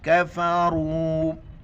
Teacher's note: मद है, 4 अलिफ की मिक़दार खींचेंगे और रा को मोटा करके पढ़ेंगे।